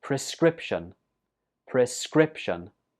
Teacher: This word has 3 syllables and the stress goes on the second syllable.